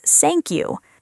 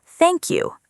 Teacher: A friend once wanted to say thank you very much, but the th sound became an s sound.